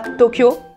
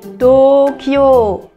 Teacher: D'ailleurs, faites très attention à ça, ce n'est pas Tokyo, mais Tokyo. Il y a un allongement sur les deux O.